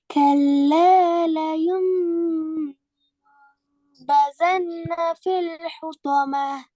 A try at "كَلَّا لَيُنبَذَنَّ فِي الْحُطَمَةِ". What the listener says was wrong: با அல்ல ப. சத்து செய்யப்பட்ட நூன் ஒண்டிக்குது. சத்து செய்யப்பட்ட நூன் ஒண்டிக்குது. ஒரு அளவுக்கு அந்த இடத்துல நின்று போகணும். உண்ணா செஞ்சு போகணும்.